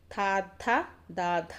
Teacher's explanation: సో దంతాల సహాయంతో పలుకుతాము కాబట్టి తా వర్గానికి సంబంధించినటువంటి వాటిని థా, థ, దా, ధ అండి, దంత్యములు అంటారు. దంతాల సహాయంతో మనము పలుకుతాము